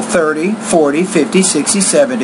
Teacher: with numbers of 10 for example 30 40 50 60 70 you have stress on the first syllable